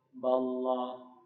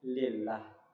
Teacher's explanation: Kalau dia berbaris fathah sama dhammah maka dia tebal. Ballah maka dia tebal. Tapi kalau berbaris fathah kasrah maka dia tipis menjadi lillah